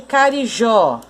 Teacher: A sílaba tônica de carijó é o jó.